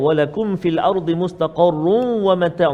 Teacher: Nama dia idgham ma'al gunnah. Tanda dia tanwin bertemu dengan waw. Dengung 2 harakat.